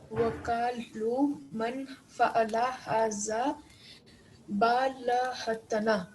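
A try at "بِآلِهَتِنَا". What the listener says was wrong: It's not ba lahatana. It is, how do we say with the name of Allah? We say bi ismi Allahi. Bismillahi. Bi ismi Allahi.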